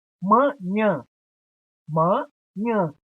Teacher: Nhã é a sílaba tônica e está na última posição. Então é uma palavra oxítona.